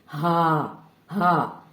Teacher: اس کے بعد ہم دوسرا حرف دیکھتے ہیں جو سینے سے نکلتا ہے اقصی حلق سے, ہا. ہا جو ہے یہ بھی حلق کے نیچے والے حصے یعنی اقصی حلق سے سینے کی طرف والے حصے سے ادا ہوتا ہے